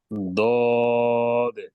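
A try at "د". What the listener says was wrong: নরম আরো নরম হবে ভিতরে চলে যাবে নরম হবে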